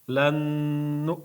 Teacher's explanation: Ozgina ikki harakat ushlab turiladi. G'unna uchun